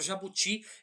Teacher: a palavra jabuti ela não tem um acento a sílaba forte dela é ti